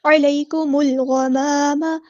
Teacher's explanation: ہے، حمزۃ الوصل ہمارا ڈراپ ہو جائے گا، اور یہاں پر لام جو ہے وہ لام قمریہ ہے، ظاہر کریں گے ، علیکم الغمام، غین ہمارا ہیوی لیٹر ہے پورا ادا کریں